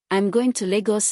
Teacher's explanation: nuclear stress on Lagos, the destination